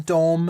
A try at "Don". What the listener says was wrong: Don with an N, not a Don.